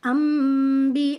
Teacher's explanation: جب نون ساکن کے بعد لیٹر با آ جاتا ہے تو ہم نے اس نون کو اسکپ کر کے اس کو کنورٹ کرنا ہوتا ہے میم کے اندر، یعنی کہ ہم نے نون کو کنورٹ کیا میم میں۔ نون نہیں پڑھا جائے گا، میم پڑھا جائے گا، یہاں پر غنہ بھی ہوگا، اور اس غنہ کا نام ہوتا ہے، یعنی اس قاعدہ کا نام ہوتا ہے اقلاب۔